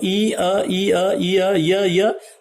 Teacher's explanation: ई को अ के साथ में मिला दिया जाए तो ई अ, ई अ, ई अ, य, तो य भी यहां तालु से निकलता है।